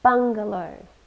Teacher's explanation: three syllables and we stress the first one